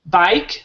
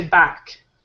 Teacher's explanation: they dropped the second vowel in that diphthong. So instead of saying bike, they'll say back.